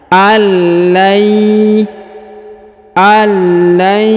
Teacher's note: Nun sukunnya menghilang melebur ke huruf ya bertasdid